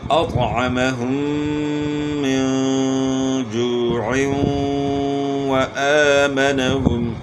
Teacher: میم مشدد میں غنہ ہوگا اور نون ساکن میں اخفا ہوگا · دو زیر کی تنوین کے بعد حروف جر ملون میں سے واو آ گیا تو ادغام مع الغنہ ہوگا